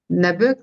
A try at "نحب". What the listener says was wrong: نحبك. Non, prononce le had. نحب. نحب.